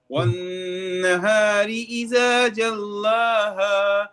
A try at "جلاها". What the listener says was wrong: جلاها، لام کو موٹا نہیں پڑھنا.